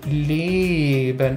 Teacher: aus dem langen geschlossenen e wo sich die zunge nicht bewegt die zunge bleibt in der gleichen position